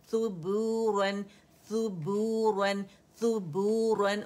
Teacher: ان رول کیے, پھر با پہ آپ گئے, اس کو پکڑا, اس کو دمہ دیا, واو مدہ ہے تو گولائی کے ساتھ 2 کاؤنٹ کے لیے آپ نے آواز گول کی